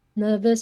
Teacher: we get a bit of British pronunciation here like nervous dropping that R